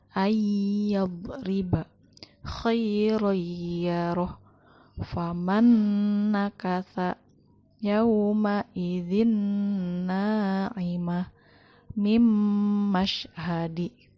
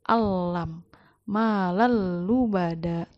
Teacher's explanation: idghamnya itu dengan gunahnya atau dengan dengungnya, jadi ditahan selama 2 harokat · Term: idgham biguna